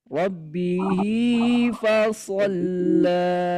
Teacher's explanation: Nah, untuk sila qasiro ini masuknya pada tabi'i. Cara bacanya tabi'i. Hanya 2 harokat. Tidak bisa kita panjangkan 4, tidak bisa kita panjangkan 5 harokat.